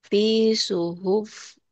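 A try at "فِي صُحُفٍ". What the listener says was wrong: Enggak, jangan ditekan kepaknya. Dilepas. Bisuhufim. Bisuhufim Fi suhufim, fi suhufim. M-nya ditahan ya gunnah.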